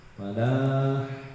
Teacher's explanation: Kalau hayyalan falah, huruf H itu ada di tengah tenggorokan